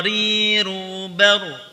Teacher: Ada getaran lebih pada ujung lidah ketika mengucapkan huruf ra. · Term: at-takrir